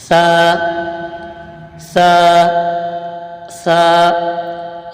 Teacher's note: इसका मखर जबान का सिरा और ऊपर के दांतों के अंदरूनी किनारे से सा अदा होता है